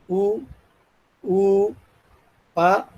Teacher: ఓష్ట్యాలు, పెదవుల సహాయంతో పలుకుతాము